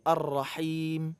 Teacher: Hanya dari tengah kerongkongan, bukan dari pangkal.